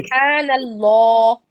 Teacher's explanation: زبر کے ساتھ اللہ موٹا ہو جائے گا